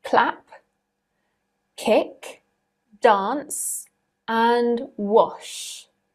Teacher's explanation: P, k, s, sh. None of the endings have voice in them. Just like we matched voiced with voiced before, we match unvoiced with unvoiced. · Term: unvoiced consonant